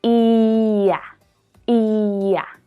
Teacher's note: Whether to add the y or the w sound will depend on which vowels are being linked. So the y sound is added between words that end in the long e and words that start with the short a